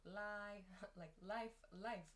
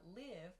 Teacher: the vowel pronunciation of the i sound is different in life it's a very open sound